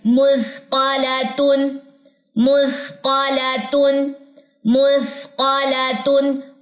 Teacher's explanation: سا باریک بھی ہے اور اس میں سیٹی نہیں ہے